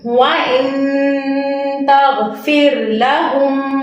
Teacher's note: نون ساکن کے right after تا تھا جو کہ حروف اخفاء میں سے ہے، تو ہم نے نون ساکن پر غنہ کیا